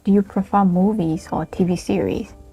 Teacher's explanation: our number three intonation pattern is rising, falling, rising, falling.